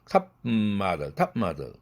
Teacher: 그런데 과 같은 비음이 있을 경우는 비개방음이 입으로는 비개방음이 되고 코로 개방되더라. 코로 새 나가요.